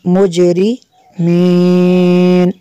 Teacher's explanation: جیم کے اوپر قلقلہ ہوگا اور نون کو ہم ساکن کر دیں گے تو یہاں پہ مد ہوگی، مد عارض کریں گے ہم یہاں پہ، اس کو تھوڑا سا زیادہ ہم نے لونگ کرنا ہے۔